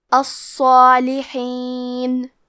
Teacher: صاد حروف التفخیم میں سے ہے، تو ہم صاد کو اور مد الف کو دونوں کو بھاری آواز میں پڑھیں گے، کیونکہ اس پہ تشدید ہے تو ہمیں 2 حرف کے برابر صاد کو پڑھنا ہے۔